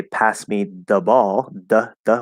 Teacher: with a dental D that is perfectly fine there's no problem with it